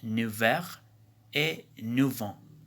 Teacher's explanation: Seule la consonne enchaînante F change de nature et se prononce V dans deux cas